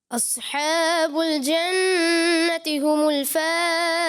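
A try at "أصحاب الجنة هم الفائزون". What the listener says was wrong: ماشاءاللہ جو پڑھا ماشاءاللہ اچھا پڑھا، مگر صوت کی ادائیگی تھوڑا پر کرنا تھا، اس لیے 10 میں سے 9 نمبر دیے جائیں گے.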